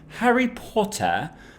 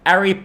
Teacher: this glottal stop uh kind of stands in in other places where others of us might expect a t sound